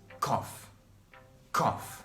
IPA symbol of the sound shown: kɒf